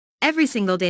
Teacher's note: Notice that each word here is stressed.